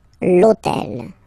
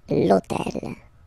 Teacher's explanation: And third example, so I took on purpose this hôtel, okay, because it starts with h, but remember that in French we don't pronounce h, okay? So basically the first sound of the word is the vowel o, okay? So for the same reason, e needs to disappear, l'hôtel, okay?